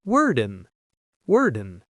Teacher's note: When we say these two words quickly, they link together. The D in word connects directly to in. So instead of word in, it sounds like worden worden.